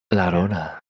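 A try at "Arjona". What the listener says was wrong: No, it's just there's no la.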